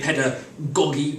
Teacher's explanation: you stress on the first syllable